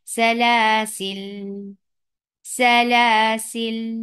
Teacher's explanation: تو اب پہلا قاعدہ یہ ہے کہ حرف صفر مستدیر کے قاعدے کے مطابق اس کو جب وقف کیا جائے گا تو پڑھا جائے گا سلاسل، سلاسل، یعنی آپ نے الف کو بالکل اگنور کر دیا اور لام کے اوپر ہی آپ نے سکون دے دیا